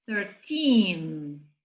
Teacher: do 13 ao 19, o teen é a parte mais forte na hora da pronúncia. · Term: sílaba tônica